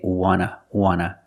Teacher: And we see the T in want is an NT. So we don't pronounce the T and we say wanna, wanna.